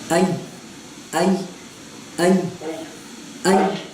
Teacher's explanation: زبان کا جو درمیانہ حصہ ہے وہ اوپر کے تالو کے ساتھ نہیں لگے گا، بالکل اس کے قریب، بالکل قریب، مطلب کہ لگنے کے قریب ہو جائے گا نا.